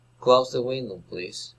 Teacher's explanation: Asking for help. Request, rising intonation.